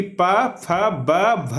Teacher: जो इसका उच्चारण स्थान होता है वह होठ से किया जाता है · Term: प वर्ग